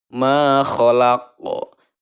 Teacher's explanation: jadi ada pantulan huruf qafnya ya, memantul cara membacanya. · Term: qalqalah kubro